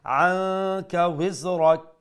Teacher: নুন সাকিন আছে না নুন সাকিন পরে কাফ আছে এখানে ইখফা করতে হবে